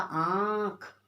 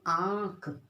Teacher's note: चंद्र बिंदु को बोलने के लिए हमें नाक और मुंह दोनों का इस्तेमाल करना है